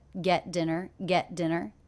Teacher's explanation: I noticed that the T here is a stop T I don't release it it's not get dinner it's get get get get dinner get